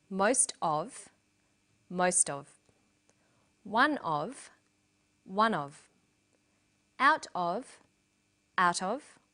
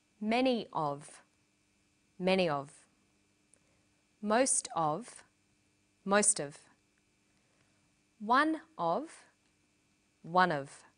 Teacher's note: Notice that of in these phrases is unstressed.